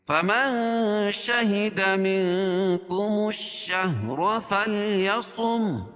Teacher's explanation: شہیدہ میں یہاں بھی اخفاء حقیقی، کیونکہ نون ساکن کے بعد کاف ہے تو یہاں ناک میں آواز کو چھپا کر پڑھیں گے